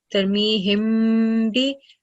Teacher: Over here, the new rule, Mim Sakin followed by letter Ba, Tarmihim bi. So we're supposed to produce a light nasal sound and prolong it for 2 seconds.